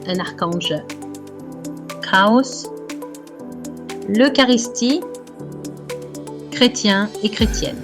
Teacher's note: The sound CH is pronounced like a K for words that are originally Greek, Hebrew, or Arabic.